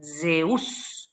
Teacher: ¿Vieron cómo es el sonido de la abeja? Uno hace una D y una S y sale el sonido ese que es bien vibrante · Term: la letra Z